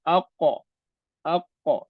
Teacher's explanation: Kalau yang qaf ni dia ada qalqalah, ada lantunan dia aqa. Dia bergantung pada apa baris ke atas tu.